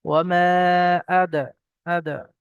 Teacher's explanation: হামজা দ্বিতীয় শব্দের শুরুতে এসছে, তো মাদ্দে মুনফাসিল, 2 থেকে 3 আলিফ পরিমাণ টান হবে।